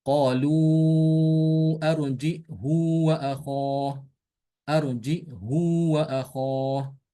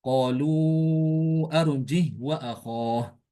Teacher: Untuk Imam Hisham, ini dia menambahkan hamzah sukun setelah jim.